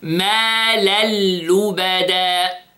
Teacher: Again, ma lallubada. So, I merged again the tanween, okay, in the lam. Here, idgham bighayr ghunna, without ghunna.